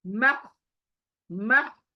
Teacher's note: हाय आया ना हलक के बीच में से, उसको वहीं से लाओ।